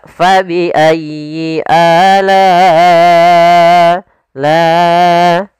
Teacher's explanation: Panjangnya adalah 4 harakat atau 5 harakat. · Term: mad wajib muttasil